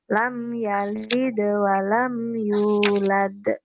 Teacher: Nah, ini sughra. Jadi mantulnya dia nggak keras.